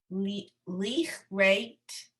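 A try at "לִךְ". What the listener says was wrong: No, it's not a ch sound. This is a kuf. No, the aleph is a silent, so you would hear this last letter.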